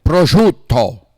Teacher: They cut off the vowel at the end.